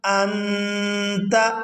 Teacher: اب اس کو کتنی دیر چھپانا ہے اس بات کو بھی ذہن نشین کر لیں کہ اخفا کی جو مقدار ہے وہ 1 الف کے برابر ہے، یعنی 1 سیکنڈ ہم نے نون کی آواز کو ناک میں چھپا کر رکھنا ہے